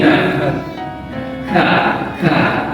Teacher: Ka, makhrajul huruf ka itu adalah di pangkal tenggorokan. Jadi pangkal lidah, ya, pangkal lidah. Di pangkal lidah, jadi kalau misalkan di lidah, ya, ini pangkal lidah, tengah lidah, ujung lidah.